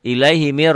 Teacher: Nun ketemu ro tidak pakai dengung Nun ketemu ro ilaihi Mir rnya dobel aja mirbih jangan lebai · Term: idgham bilagunah